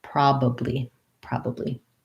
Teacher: we have first syllable stress the o says the clear ah vowel pro and then this a says schwa prob probably so thinking